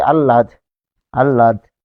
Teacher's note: এটি যখন থাকে এটি ল এর মহাপ্রাণ রূপ, ল এর মহাপ্রাণ রূপ। তাহলে ল এর মহাপ্রাণ রূপ মানে এটি উচ্চারণ করতে গেলে বাতাসের চাপের আধিক্য থাকবে